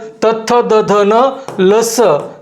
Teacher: जिभेचा शेंडा जर तुझ्या वरचा शेंडा दाताच्या मागच्या बाजूला जाऊन लागला तर त्याला म्हणायचं दंत्य